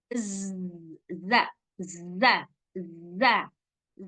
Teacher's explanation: sirofir itu adalah suara berdesis yang keluar dari antara ujung lidah dengan gigi seri nah ini ujung lidah ketemu dengan gigi seri Nah jadi makanya